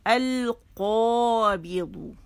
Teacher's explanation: اس میں زبان کی جڑ اوپر جا کے تالو سے لگ جاتی ہے، نرم تالو سے، تو قوف کی ویسے لگتی ہے اور ساتھ میں یہ بھی آتا ہے تو یہ موٹا ہو جاتا ہے. · ہونٹ گول نہیں کریں گے. اگر آپ ہونٹ گول کریں گے سننے والے کو پتہ چل جائے گا کہ آپ نے اس میں واو شامل کر لیا ہے، تو باہر سے اس کا تعلق نہیں، اس کا صرف تعلق اندر سے ہے.